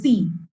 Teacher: সি উচ্চারণ করতে গেলে তোর হচ্ছে টিথের সাথে দাঁতের সাথে টাচ করে যাচ্ছে